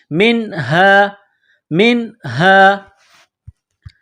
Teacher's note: نہیں چھپائیں گے، میم نون زیر من، ہا الف زبر ہا، یہ گول ہا ہے، صرف منہ سے ہوا نکالنے کی طرح اس کو پڑھتے ہیں